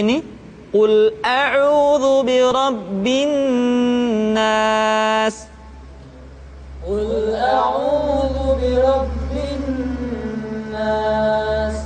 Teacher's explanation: ditahan suaranya ketika mengucapkan Nun tasdid